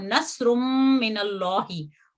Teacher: जब हम तनवीन के बाद मुशद्दद मीम है तो इसकी एक हरकत गिर जाती है तनवीन की, और नस्रुम मिनल्लाहि, और मीम जो है वो तशदीद ले लेता है, और इसके बाद इसको यहाँ पे गुन्ना करके 2 हरकत के जितना वक्त दिया जाएगा और लंबा करके हम इसको पढ़ेंगे गुन्ना के साथ।